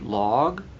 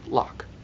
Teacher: these word endings shorten the duration of the vowel when compared to ping words, which end in voiced consonants like N, M, or NG, or no consonant at all. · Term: zi word